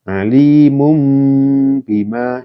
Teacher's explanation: Maka dibaca bunyi n berubah menjadi m. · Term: iklab